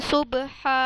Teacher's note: صبح کا جو با ہے یہ ہے حروف قلقلہ، قطب جد اس میں با آتا ہے، تو اس میں نے قلقلہ کی آواز کو ٹکرایا، صبح، ٹھیک ہے۔ صبح، آگے جو ہا ہے اس کے اوپر کھڑا زبر، اس کو میں نے لمبا کیا